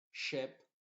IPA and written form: ʃɪp (Ship)